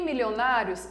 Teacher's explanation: a penúltima sílaba sendo a mais forte, e eu tenho aqui um ditongo crescente